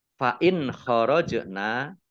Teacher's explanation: nun sukun bertemu dengan huruf khaf dibaca bacaan idhar dibaca jelas. Kemudian jim sukun bacaan qalqalah dibaca memantul, ditampakkan pantulannya.